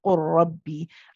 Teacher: So you say qur rabbi, and then you say the first lam becomes a copy of the next letter, which is the ra